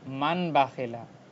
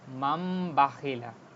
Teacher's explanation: নুন সাকিনের পরে বা আসার কারণে এটা মিম হয়ে গেছে। এখানে দেখেন ছোট্ট করে একটা মিম, তো এটা নুন সাকিন না হয়ে মিম সাকিন হয়ে যাবে। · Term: ইকলাব